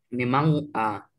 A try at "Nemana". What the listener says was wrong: No, se oye un corte ahí. Tiene que unirse, oírse con una sola palabra. Tiene que oírse como que se le cayó la nariz. Pero sin decir una G.